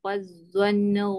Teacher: d hujung lidah kena keluar